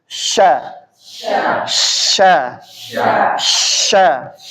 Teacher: Menyebarnya angin di mulut saat mengucapkan huruf shin sampai bersambung pada makhraj dha. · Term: tafasyi